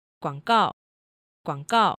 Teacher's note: you need to make sure that you get high enough for the beginning of the fourth tone. It should be considerably higher than the third tone.